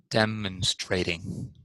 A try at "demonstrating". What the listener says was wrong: Good, good, good.